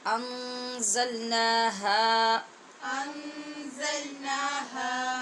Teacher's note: ذل کی آواز نہیں ہونی چاہیے، زا میں سیٹی کی آواز پیدا کرنی ہے اور مضبوطی سے ادا کرنا ہے، نا ہا۔ یہاں یاد رکھنا ہے کہ دونوں کی مقدار برابر رکھنی ہے اور ایک الف کے برابر لمبی کرنی ہے۔